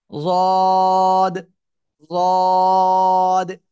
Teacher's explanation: জিহ্বার গোড়ার কিনারা উপরে মাড়ির দাঁতের গোড়ার সাথে লাগাবেন, লাগিয়ে তিন আলিফটা নিয়ে উচ্চারণ করবেন।